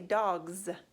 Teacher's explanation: We've got D-A-G, dog, D-O-G, right? But when I put the S on the end, it sounds like a Z. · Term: Z buzz sound